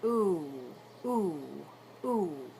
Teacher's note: the English ooh is a Glide vowel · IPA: /uʷ/